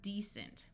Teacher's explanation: we have the root word decent with a long E and a C using its soft sound of S